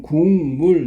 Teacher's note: 기억이었던 게 미음의 영향을 받아서 이응으로 바뀐 거야. · 조음 위치는 그대로 여린 입천장 소리. 조음 방법은 여기는 파열음에서 딱 갔더니 콧소리, 즉 울림 소리로 이렇게 바뀌었잖아.